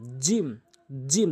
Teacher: জিব্বার মাঝখানে উপরে তালের সঙ্গে